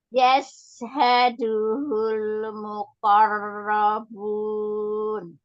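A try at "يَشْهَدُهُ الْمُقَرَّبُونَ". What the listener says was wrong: Nah, di sini ya, hati-hati ada lam sukun, tidak tawalud ya. Tidak yashhaduhul. Hati-hati di situ ya.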